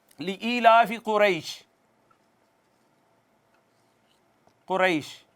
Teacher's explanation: یہ یا ساکن ہے، ما قبل مفتوح ہے، تو یہ یائے مدہ نہیں ہے بلکہ یائے لین ہے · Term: مد لین عارض